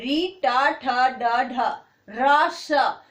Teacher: आपकी जो जीभ है वो कहां टच कर रही है? मूर्धा को।